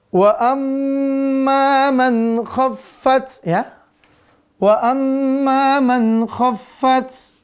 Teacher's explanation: Huruf kha di mana? Tenggorokan atas.